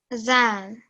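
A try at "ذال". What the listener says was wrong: If you're an Urdu speaker, you'll probably know this letter as a zal. Okay, there's a Z sound associated with it. But this is Arabic, and although the letter looks the same as it does in Urdu, this is Arabic.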